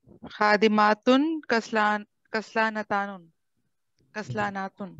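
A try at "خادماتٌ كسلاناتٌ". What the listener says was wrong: हाँ, ये देखें, सब बोल रहे हैं खादिमातुन, क्या अलिफ आ जाएगा ना, और लंबी ता आ जाएगी।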